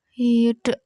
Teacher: Hid, ya, ini namanya mat arid lisukun karena ada mat tabi'i bertemu huruf hidup dibaca waqaf. Hid, nah deknya ini dibacanya itu memantul ya karena ini namanya qalqalah kubra karena ada huruf qalqalah yang matinya mendatang disebabkan dibaca waqaf.